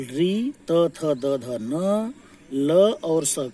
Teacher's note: तो लृ, त, थ, द, ध, न, ल और स का दंत